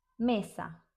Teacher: It's short and clean. Don't stretch it like in they.